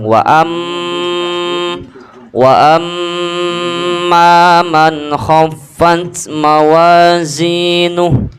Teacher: gunnah 2 harakat dengung